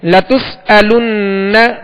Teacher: نون مشدد ہے، اس پر تشدید ہے، اس میں غنہ کریں گے